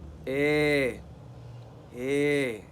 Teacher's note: As you notice, it is a long vowel. It is spread.